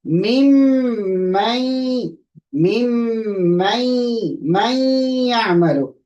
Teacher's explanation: we don't read the noon. Okay, we read the noons very, very, very slight. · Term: idgham